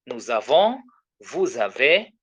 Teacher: a Z sound is produced between the subject pronoun because of the final S, and then the final S here, the final S, and then the verb beginning with the vowel.